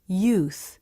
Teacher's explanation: notice how the lips begin to round for the next sound